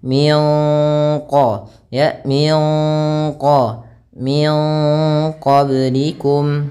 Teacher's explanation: huruf q maka kita namakan dengan bacaan Ikhfa cara membacanya yaitu samarkan nunnya kepada huruf q bukan lagi Min qoblikum tapi kita samarkan ke Q dan ditahan